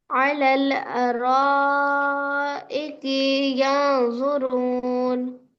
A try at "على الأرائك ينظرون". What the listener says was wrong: काफ को खींच दिए ना। काफ को क्यों खींच दिए?